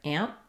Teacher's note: we might use a bit of a stopped T there